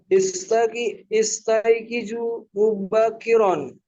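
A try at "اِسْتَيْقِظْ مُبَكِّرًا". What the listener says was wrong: Nah, ini jangan istaiqizu, tapi pakai sukun. Istaiqiz.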